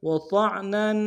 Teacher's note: طا کو موٹا ادا کرتے عین کے سامنے لائیں گے، نون کے اوپر تنوین غنہ کریں گے